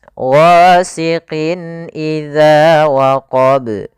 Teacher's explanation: ada tanwin bertemu dengan huruf hamzah maka ini kita an dengan izhar halqi yaitu suara tanwinnya atau nunnya dibaca dengan jelas